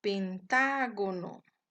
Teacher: la sílaba tónica se encuentra en la antepenúltima sílaba por lo tanto es una palabra esdrújula